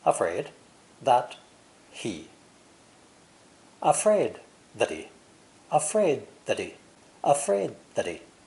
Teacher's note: the pronoun he is also unstressed here and pronounced without the h sound by dropping the h sound we can easily link three words